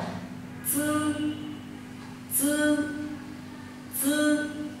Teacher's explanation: lưỡi chúng ta hơi trước một chút